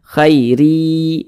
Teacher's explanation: huruf ra dibaca tipis, dibaca tarkik karena dia memiliki tanda baca kasroh tain